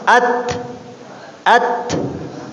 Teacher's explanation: ketika membunyikan huruf yang disifati dengan hamas ini disertai dengan desis angin ya